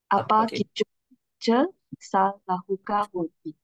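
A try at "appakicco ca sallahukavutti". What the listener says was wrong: We don't have to say sal lahuka wuti. Sal lahuka wuti. See here? Sal, then lahuka at the same time. One word. Sal lahuka buti. If you're going to break them, there will be a different pronunciation.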